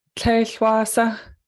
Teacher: these that you'll notice are all high tone, tlech and wa and sa